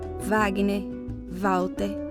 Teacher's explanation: o w com som de v será considerado como consoante